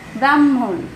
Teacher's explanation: আবার হ যোগ ম, হ যোগ ম এর যুক্ত অক্ষর, এটার উচ্চারণ করতে গেলে আমাদের হয় ম হ এর মতো, যেমন ব্রাহ্মণ, ব্রাহ্মণ লিখতে গেলে আমরা হ যোগ ম লিখি কিন্তু উচ্চারণ করছি ম হের মতো, মটা আগে উচ্চারিত হচ্ছে পরে হ